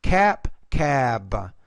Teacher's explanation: because the B is a voice consonant so the vowel should be longer